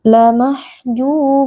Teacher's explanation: ww sukun yang sebelumnya berharakat damah dibaca panjang dua harakat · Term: Mad thobii